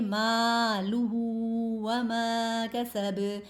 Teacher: الف ساکن سے پہلے والے لفظ پر زبر ہے تو اس کو بھی 1 الف کے برابر کھینچ کے پڑھیں گے، مالہ وما کسب، وما بھی ہم لوگوں نے 1 الف کے برابر کھینچ کے پڑھا ہے کیونکہ یہاں پر بھی الف مدہ ہو رہا ہے، ٹھیک ہے۔